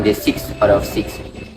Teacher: In the phrase 6 out of 6, the word of is transcribed as of in citation form or isolated form, but of in rapid speech, where the vowel o is reduced to schwa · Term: reduction